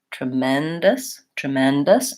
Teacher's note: then we have a schwa for the last syllable so lengthen tremendous tremendous and reduce your vowels on the beginning · reduce your vowels on the beginning and the end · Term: reduced vowels